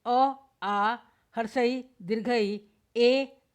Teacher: वे स्वर जिनका उच्चारण करते समय ओष्ठ गोल नहीं होते अपितु फैल जाते हैं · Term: प्रसरित स्वर